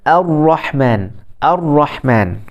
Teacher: ra yang ada syaddah itu dikurangkan takrir dia. Takrir ni maksudnya macam getaran lah, getaran.